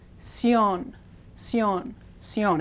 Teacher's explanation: So this last syllable is ción, ción, ción. Again, the I blends, turns into a Y, so it's one syllable